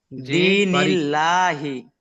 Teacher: আর আল্লাহ শব্দের নামের আগে জের এসেছে সেই জন্য পুর করবো না। বার করবো।